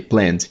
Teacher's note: plan no passado, porque termina vozeado, é planned. O ED tem som de D